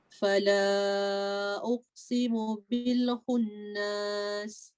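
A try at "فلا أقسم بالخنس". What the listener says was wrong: Okay, jangan panjang tu khunnas.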